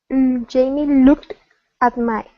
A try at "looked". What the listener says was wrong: Okay, open up your mouth just a little bit more. Okay, instead of looked.